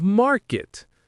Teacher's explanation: Native speakers often use a subtle unreleased T sound at the end of market to distinguish it. It's not a strong clear T, but a slight stop of air that makes the difference.